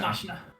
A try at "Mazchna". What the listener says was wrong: The CH is silent. Mazchna.